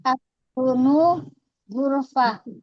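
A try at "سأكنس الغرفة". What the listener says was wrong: Sa'aknusu, laisa sa'aksunu. Sa'aknusu.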